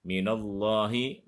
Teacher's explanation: Minallahi, maka lam harus dibaca tebal, tafkhim, karena sebelum lafad Allah ada huruf nun berharokat fathah